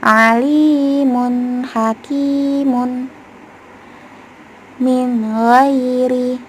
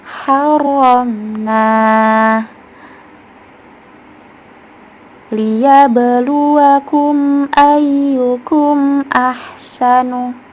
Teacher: gunnahnya sedikit mengalir namun tidak panjang sampai 2 harokat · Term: naqisah